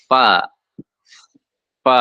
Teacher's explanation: bibir ya yang bawah jumpa dengan gigi seri yang atas itu menghasilkan satu huruf yaitu fa